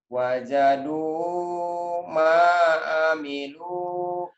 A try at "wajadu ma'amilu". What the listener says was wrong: Wajadu. Tuh, tenang ya. Mana panjangnya. Ini panjang, yang ini matobi'i karena domahnya bertemu waw mati. Ini patahnya bertemu alif. Ini juga domah ketemu waw mati. Itu bacaan panjang. Jadi ada pasangan. Pasangannya ini. Ini pasangannya ini. Tuh, wajadu.